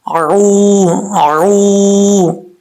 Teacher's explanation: آئین کے مخرج سے نکالنا ہے آئین کو. واؤ مدہ ہے، ایک الف کی مقدار اس کو لمبا کریں گے. عو، آئین واؤ پیش عو، عو.